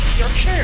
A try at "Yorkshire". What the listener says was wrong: You're saying Yorkshire wrong. It's Yorkshire, not Yorkshire. Yorkshire. Shire's not pronounced as Shire, sure.